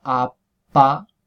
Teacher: Si vemos la diferencia, eh, pues efectivamente si yo me toco aquí a la altura de la laringe y digo a pa, pues durante la P cesa la vibración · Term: oclusiva sorda